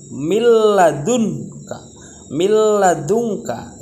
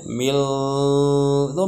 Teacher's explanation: nun mati bertemu dengan huruf lam ya harus dibaca idgham bilagunnah enggak boleh mendengung